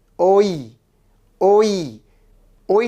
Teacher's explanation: এখন এই ওই শব্দটির লিখিত রূপ হচ্ছে অ যোগ ই কিন্তু এটির উচ্চারণ রূপ হচ্ছে ও যোগ ই